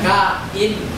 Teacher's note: Atin yung glottal stop in between.